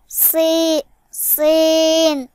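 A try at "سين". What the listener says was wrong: সিন, বাইরের দিকে সিন। তুমি সিন এভাবে গলার মধ্যে নিচ্ছ কেন? সিন বাইরে সি, বাতাস বের হবে।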